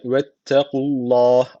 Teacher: Allah lafı burada kalın okunuyor Çünkü öncesindeki harfin harekesi üste öncesindeki harf üstten bağlanıyor Allah lafzı kalın okunuyor dolayısıyla bir de